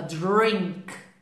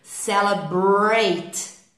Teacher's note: Esses R's em inglês, você tem que enrolar a língua lá no céu da boca